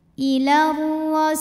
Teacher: Huruf ro dibunyikan secara tafkhim karena barisnya fathah, maka dibaca tebal.